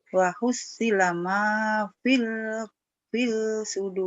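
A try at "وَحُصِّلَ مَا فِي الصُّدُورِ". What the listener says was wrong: lamnya kan oren nih, ingat berumus oren tak dibaca ke hitam fisudur. Wahusilama fisudur. lamnya nggak dibaca, kan warnanya oren, oren kuning nggak dibaca, tak dibaca.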